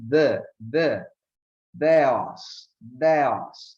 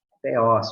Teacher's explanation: nós acabamos falando com o sotaque e esta palavra acaba perdendo este som leve de D, né? Então, nós falamos teós, porque é assim que nós falamos em português.